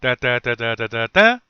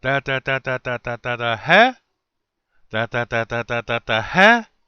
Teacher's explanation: it just stayed one tone, and at the end it jumped up high.